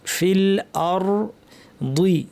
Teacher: ফিল আরদি, আ শক্ত হবে এবং পাতলা থাকবে। র ভারী, র সাকিন, আওয়াজটা কিছুক্ষণ জারি থাকবে, আংশিক জারি।